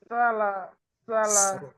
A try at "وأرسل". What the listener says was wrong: সিন সিন তাতে ততটা বাতাস বের হয় না, সিনে বেশি বেশি বাতাস বের হয়।